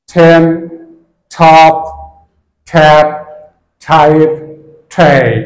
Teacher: টি এর উচ্চারণ আমরা যেখানে ট করতাম সেখানে আমরা ঠ করব